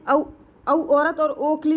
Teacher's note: औ औरत और ओखली जो है वो कंठ ओष्ठ में आते हैं।